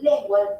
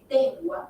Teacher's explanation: en vez de decir lengua dice dengua sustituye la L por la d